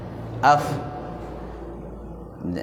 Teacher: Untuk melafazkan huruf fa, yaitu kan fa itu adalah huruf hamas ya, hams, yaitu napas yang mengalir.